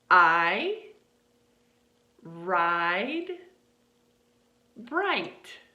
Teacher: It's almost like going from ah to E.